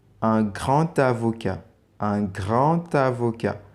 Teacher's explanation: The D, consonant D, tends to T in liaison.